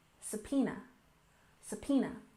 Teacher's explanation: next we have subpoena we stress the second syllable